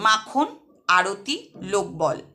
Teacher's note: এগুলির প্রত্যেকটাতেই প্রথম যে দল তাতে শ্বাসাঘাত পড়ছে